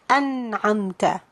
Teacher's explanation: So here the noon is followed by ayn, so the noon is going to be pronounced clearly without adding full gunna. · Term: izhar